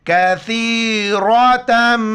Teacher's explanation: کاف زبر کا، ثا یا زیر ثی، را زبر را، کثیر، تا میم دو زبر تم، ناک میں آواز پیدا کریں گے